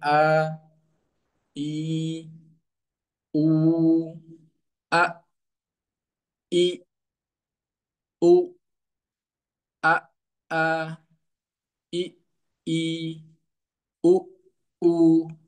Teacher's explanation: ada huruf hamzah yang keluar dari bagian tenggorokan paling dalam